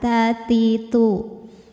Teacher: untuk ta yang hidup keluarnya bersamaan dengan keluarnya suara